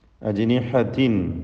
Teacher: ജീമിൻ്റെ സുക്കൂൻ ഖൽഖല നൽകി ശബ്ദം ഹറക്കത്ത് പോലെ വ്യക്തമാക്കി ചലിപ്പിച്ചുച്ചരിക്കണം